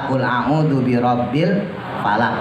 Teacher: qulubabbil falaqi tulisannya falaqi nah dibacanya tetap Falaq cuman cara bacanya ketika di akhir maka qolqolahnya pantulannya penuh